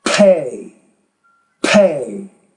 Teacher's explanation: the P you have to produce that with more air